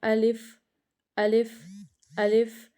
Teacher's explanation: تو منہ کا کوئی بھی حصہ ہل نہیں رہا، حالی حصے سے ادا ہو رہا ہے۔ تو الف کا مخرج کیا ہے کہ الف منہ کے حالی حصے سے ادا ہوتا ہے۔